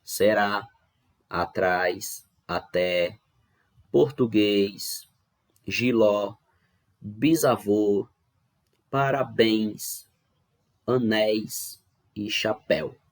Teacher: Percebam que em todas elas nós temos a última sílaba sendo pronunciada com mais força, ou seja, nós temos a última sílaba sendo a sílaba tônica. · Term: oxítonas